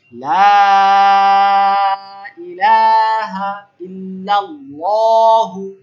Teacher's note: এখন মুনফাসিল হওয়ার কারণে লম্বা টান দিতে হবে। লা ইলাহা ইল্লাল্লাহু, নট লাহু।